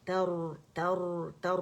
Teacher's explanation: تر, تا فتح را سکون, تر, ترمیہم بحجارۃ, روتن روتن, ترمی, تر تر تر, را کی تقریر واضح کریں گے کیونکہ را سکون سے پہلے ہمارے پاس فتح رہی تو را موٹا پڑا جا رہا ہے